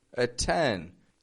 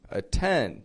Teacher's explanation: T is beginning the strong part of the word there. So we give it a regular T.